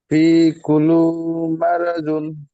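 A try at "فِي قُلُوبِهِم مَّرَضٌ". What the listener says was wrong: কুলুবিহিম বলেন, কুলু বলছেন না কেন? বিহিমটা বলবেন তো, সে কুলুবিহিমটা পরিষ্কার হচ্ছে না।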